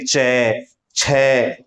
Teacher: जीभ का स्पर्श ऊपर कितना तालू के साथ बिल्कुल चिपक रही है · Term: स्पर्शी व्यंजन